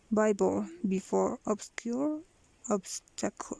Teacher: It is devoiced because some of them, like Bible and before, are in the beginning of the word, and obscure and obstacle are before a fortis sound.